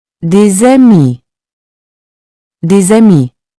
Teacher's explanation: Here, the S becomes a Z sound